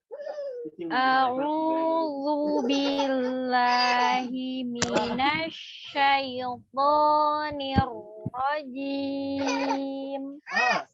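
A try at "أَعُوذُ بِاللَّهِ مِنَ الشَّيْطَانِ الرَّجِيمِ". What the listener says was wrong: Huruf zal secara mahraj sudah benar ya, tapi hanya terlalu tebal, jadi tidak perlu mengangkat pangkal lidah. Rokoh saja, lembut saja. A'udzu bukan zu, tidak.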